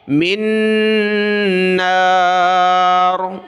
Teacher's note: میم کے ساتھ, میم کو نون کے ساتھ. ثیاب من نار, یہاں دو نون نہیں پڑھنے، من النار نہیں پڑھنا، دو نون ہیں، پہلا ساکن اس کو چھوڑ دیا، میم کو دوسرے نون کے ساتھ ملایا